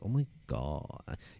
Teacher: And you always have a bit of a vocal fry.